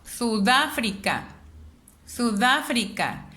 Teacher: Me doy cuenta dónde suena más la voz. Sudáfrica. Sudáfrica. Me doy cuenta que es en el da. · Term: palabra esdrújula